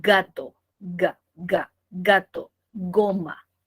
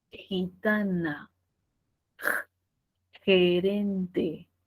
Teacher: gato goma oclusivo pero podría ser el fricativo si es que digo gitana gerente · Si veo la G, puede tener 2 sonidos, y uno es el oclusivo y el otro es el fricativo